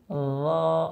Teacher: ল উচ্চারণ করার সময় আমাদের জিহ্বার আগাটা উপরের দুই দাঁতের আগার সাথে লাগবে।